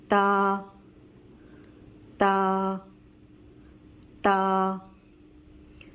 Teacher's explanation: سامنے والے اوپر والے دانتوں کی جڑ میں ٹچ کریں گے تو تا ادا ہوگا